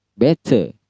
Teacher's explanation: Dalam Britishnya atau Oxford itu T selalu jelas dalam sikon apapun. Jadi dibaca better.